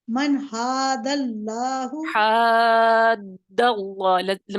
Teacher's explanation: आपने क्या करना है, 6 हरकत तक खींचना है, मद पूरी कीजिए। · देखें, हा जो है इसमें रगड़ तो है लेकिन ये मोटा नहीं है, तो अलिफ शिबा मुसालिया की यानी मोटा नहीं होगा, इसकी वजह से अलिफ बारीक रहेगा। हा जो है बारीक लेटर्स में से है, सिर्फ रगड़ पैदा होगी। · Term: मद्दे लाजिम कलमी मुसक्कल